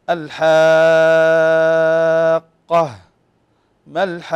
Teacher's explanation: هذا المد يسميه أهل التجويد مدا لازما كلميا مثقل، يعني يجب على كل قارئ أن يمده ست حركات. سمي لازما يا إخوة للزوم مده عند كل القراء ست حركات، اتفقوا على مده واتفقوا كذلك على مقدار مده، فمده ست حركات في كل القراءات.